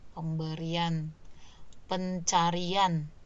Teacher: Kalau kita lafalkan kan ada luncuran y di situ